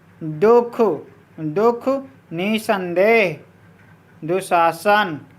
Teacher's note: विसर्ग वाले अक्षर पर बलाघात होता है